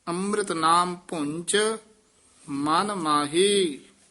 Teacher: ਚਚੇ ਨਾਲ ਬੋਲਣਾ ਵੀ ਭੁੰਚ ਝਜਾ ਨਹੀਂ ਬੋਲਣਾ